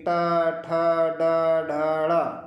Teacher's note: तो जो हमारी टंग है वह हमारी मूर्धा को टच करती है फिर वहां से साउंड या ध्वनि को या हवा को रिलीज करती है